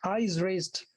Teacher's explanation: Spondee meaning a foot of two syllables, but both of them stressed.